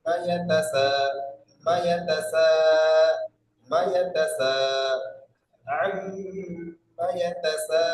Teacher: মা ইয়া তা এই তিনটা একদম টান দেবে না, এই মিটটা কোনটা করবে না।